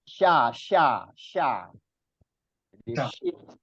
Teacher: ketika pengucapan huruf disertai menyebarnya angin di dalam mulut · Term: tafasyi